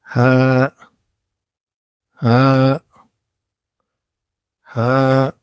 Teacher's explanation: سانس کے ساتھ بالکل نرم آواز